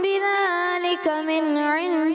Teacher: نون ساکن میں کلکلا انہوں نے کر دیا